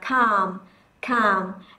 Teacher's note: chúng ta không đọc âm l, chúng ta sẽ chỉ đơn giản đọc là calm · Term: âm câm